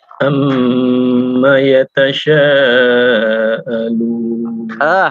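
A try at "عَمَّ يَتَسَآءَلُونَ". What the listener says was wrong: Untuk mohon maaf untuk sin, coba sinnya. Bukan shin ya, bukan shin tapi sin, sa biasa saja. Kita kalau misalkan kita nulis S dan A, sa. Amma yatasa. Nah, kalau misalkan kita tulis Latin saja, sin dan A, sa. Coba, sa. Sa, biasa saja, sa.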